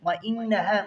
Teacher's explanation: مشدد ہے سختی کے ساتھ اور غنہ بھی ہوگا